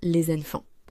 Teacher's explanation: La liaison fait apparaître un son zé qui n'existe pas à l'écrit